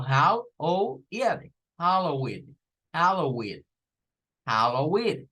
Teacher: el sonido de la E, se suena como una I corta